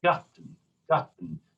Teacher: So it's a shorter open vowel sound